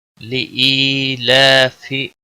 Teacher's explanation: لئی یا مدہ ہے، 1 الف کے برابر کھینچ کر پڑھیں گے